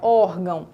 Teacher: Quando eu coloco o tio, eu tenho um som mais fechado, mais nasal, órgão. Mas além do meu tio, eu tenho também um acento agudo, e é esse acento que marca a minha sílaba tônica. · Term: nasalização do som